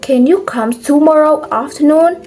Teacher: Grammar function words like can and you remain unstressed and are said quickly.